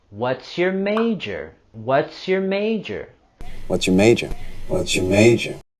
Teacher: And we're going to have our falling intonation for this WH question.